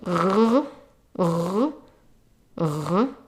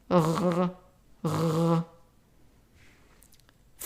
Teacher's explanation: Then the gargling sound, r, r, r. It's similar to the French R, so it's an R if you speak French.